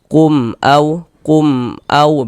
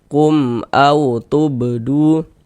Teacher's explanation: Maka dibaca jelas, tak berdengung, baca pendek saja. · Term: izhar syafawi